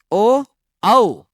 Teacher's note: अब देखो अगर उ को बोलोगे उ को ओष्ठ के आधार पर उ को बोलने में लघु उ बोले या दीर्घ ऊ बोले लगभग गोल हो जाते हैं उ ऊ लगभग ओष्ठ गोल हो जाते हैं आगे से और ओ को बोलने में भी ओ औ इन्हें बोलने में ओ औ इन्हें बोलने में लगभग ओष्ठ की आकृति गोल हो जाती है। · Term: वर्तमुखी स्वर